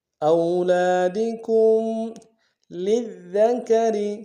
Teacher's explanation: فی اولادکم، حمزہ کو واو کے ساتھ ملانا ہے، واو لین بغیر کھینچے پڑیں گے، لام کے ساتھ الف مدہ ایک الف دال میں کھینچیں گے۔ کاف کو میم ساکن کے ساتھ ملانا ہے، غنہ کریں گے · اولادکم للذکر، لام کو دال کے ساتھ ملانا ہے، دال کے اوپر تشدید زور دیں گے، دال کو باریک ادا کریں گے، را کو باریک ادا کریں گے